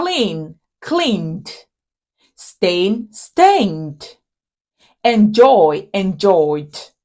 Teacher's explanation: your vocal area meaning it is a voiced consonant and so when Ed is added to a word that ends with a voice consonant it is articulated as D